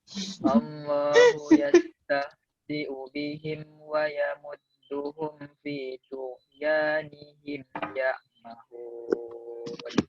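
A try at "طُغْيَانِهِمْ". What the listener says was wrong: Ini to tebal, ghain tebal ya. Bukan tu. Bukan tu.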